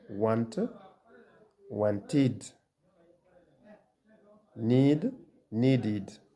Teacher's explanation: The ed ending is pronounced id